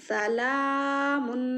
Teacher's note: सीन के ऊपर ज़बर है, नहीं खींचेंगे। लाम के ऊपर खड़ा ज़बर है, थोड़ा खींचेंगे। सला मीम 2 पेश मुन, सलामुन।